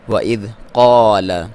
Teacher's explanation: قاف کو موٹا پڑھنا ہے، حروف مستعلیہ میں سے ہے، اور الف مدہ ہے، لام کو باریک۔